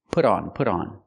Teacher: we hear that t and put pronounced as a fast D